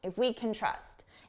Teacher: you hear trust more because it's the main verb and can which sounds like kin is very short can can